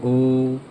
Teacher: ओ गले से निकल रहा है, लेकिन आपका होठ भी ओ की तरह गोल सा हो जा रहा है। आप देखिए ओ, तो ओ का मुंह भी, आपका होठ भी मूव कर रहा है, हिल रहा है, और आपके गले से आवाज़ भी आ रही है।